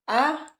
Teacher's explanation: di bawah menjauh sedikit dari rahang atas E dan o 3 vokal rendah atau bawah yang dibentuk apabila rahang bawah diundurkan lagi sejauh-jauhnya